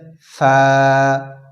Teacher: فا کا مخرج ہے نیچے کے ہونٹ کی تری والا حصہ اور سامنے کے اوپر کے دو دانتوں کے کنارہ لگنے سے ادا ہوتا ہے. جیسے فا، اوپر کے دو دانتوں کے کنارہ نیچے کے ہونٹ کے تری والا حصہ میں لگ رہا ہے. فا بالکل باریک اور کھینچ کے پڑھا جائے گا.